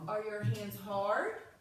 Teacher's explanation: for the question marker your voice goes up because you're kind of waiting for the answer